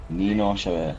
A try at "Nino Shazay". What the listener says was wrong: First, northbound half is correct. Southbound half sound like you're saying Chavez. He hates that. Shazay. Shazay. Split it up. Just say Shay. Yeah, say Shut.